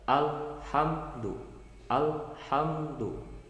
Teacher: cara membaca alif lamnya itu dengan cara diidharkan atau dijelaskan. Jadi bunyi lamnya itu ada. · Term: alif lam qomariyah